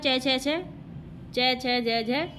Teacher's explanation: च छ ज झ, ये तालव्य ध्वनि होते हैं